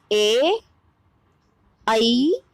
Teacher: ए, आई, यानी कि छोटा ए और आई, ये दोनों, इनका उच्चारण स्थान कंठ तालु है